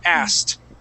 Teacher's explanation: we skip right over that that K and go straight to the T